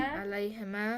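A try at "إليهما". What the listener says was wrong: Ilayhima. Don't say alay. Ilayhima.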